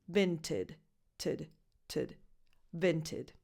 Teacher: the last vowel is just a schwa because it's in an unstressed syllable. So you just go from the T to the D.